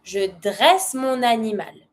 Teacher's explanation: Starts with the vowel. You link it with your N.